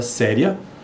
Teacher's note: a palavra séria, o acento tônico está no sé, no é.